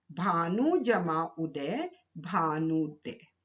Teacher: भानु शब्द का अंतिम वर्ण है उ और उदय शब्द का प्रथम वर्ण है उ, तो दोनों ह्रस्व उ मिलकर दीर्घ उ में परिवर्तित हो गए। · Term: दीर्घ संधि